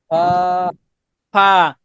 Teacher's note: নিচের ঠোঁটের পেট হুম, সামনের উপরে দুই দাঁতের আগার সঙ্গে লাগাইয়া উচ্চারিত হয়